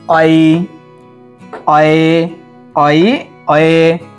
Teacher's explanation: আমরা যে এ বলি বা ওই বলি, সঠিক উচ্চারণটা তখন হয়ে যাচ্ছে অ আর ই। যখন বলি অই, অয়ে, অই, অয়ে, ঔ, ঔ, ঔ, ঔ, এরকম করে উচ্চারণ হয়ে যাচ্ছে। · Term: সন্ধ্যাক্ষর